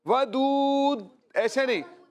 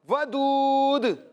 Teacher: آخر میں جو دال ہے نا آپ نے اس میں رکنا نہیں ہے، کلکلا کرنا ہے